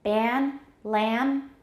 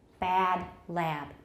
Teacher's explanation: a may be considerably raised in ban, lamb, compared with bad, lab.